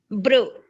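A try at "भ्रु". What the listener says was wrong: కాదు, భా భా భ్రు భ్రు భా అంటున్నారు, బ్రు అంటున్నారు. బ్రు కాదు, భ్రు భ్రు. ఇంకొంచెం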